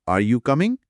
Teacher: এখানে বাক্যের শেষে শরটা উপরের দিকে উঠছে বা রাইজিং ইন্টারনেশন হচ্ছে। এটা দিয়ে একটা অনিশ্চয়তা বা প্রশ্ন বোঝানো হচ্ছে।